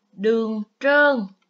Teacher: tiếng trơn có âm tr khi đọc mình cũng cong lưỡi